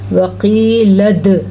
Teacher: دال کے اوپر جھٹکا ہوگا کیونکہ دال حروف قلقلہ میں سے ہے